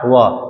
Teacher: दांत और ओष्ठ से बोले जाने वाला।